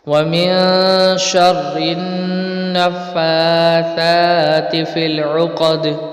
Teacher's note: تا کو بغیر کھینچے پڑھیں گے، یہاں پر حرکت ہے. فی العقد دال میں قلقلہ کریں گے